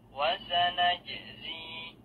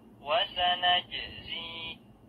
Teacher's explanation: Jim sukun hukumnya qalqalah, yaitu memantulkan bunyi huruf jim.